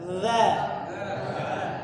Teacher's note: lidahnya ujungnya dikeluarkan sedikit dza ya seperti digigit tapi enggak digigit jadi yang nempel itu ujung lidah dengan Gigi atasnya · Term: huruf dza